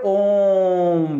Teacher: दीर्घ स्वर से ज्यादा समय लगता है यानी तीन गुना टाइम लगता है